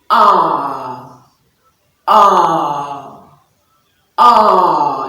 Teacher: the back of the tongue stretches up a little bit and it's also a long sound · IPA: /a:/